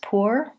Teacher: And for pour, I would try or, pour. Some Americans will say pour as poor with the same oo vowel.